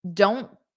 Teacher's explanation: So generally what we call, it's not that it's completely silent, it's that we don't push out the air at the end. So it's called a flap T.